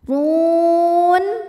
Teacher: Huruf ro dibunyikan secara tafkhim karena ro berharokat dhammah. Cara bacanya ro dibunyikan dengan tebal. Run. Hukum tajwidnya mad arid li sukun karena mad tabi'i ketemu sama huruf yang disukunkan karena waqaf.